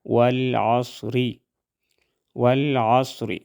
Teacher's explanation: زبر ول عین صاد زبر عصر را زیر ری والعصری والعصری صاد کو ہم موٹا ادا کریں گے اور وقف کی صورت میں را موٹا ادا ہوگا والعصر اور